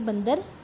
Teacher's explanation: जब आप बंदर शब्द का उच्चारण करते हैं तो जो न की आवाज़ है वो आपके नाक से आती है, इसलिए यह अनुस्वार है।